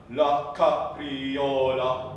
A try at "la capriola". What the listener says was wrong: Yeah, but you don't have to give so much energy to the ca with your mechanism. La capriola.